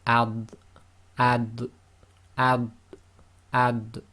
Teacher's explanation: we have the dad, which is not qalqala, but it is tafkhim